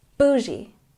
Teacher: We stress the first syllable